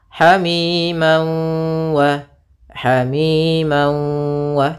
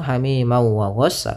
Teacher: Cara membacanya yaitu masukkan tanwinnya ke waw sambil ditahan gunnahnya 2 harakat. Hamiman wa, hamiman wa, tidak langsung hamiman wa ghassa, tapi tahan dulu. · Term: idgham bi gunnah